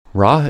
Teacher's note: Ra is formed with the tip of the tongue curled back toward the roof of the mouth without touching any part of the mouth. The back of the tongue stays low. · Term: retroflex liquid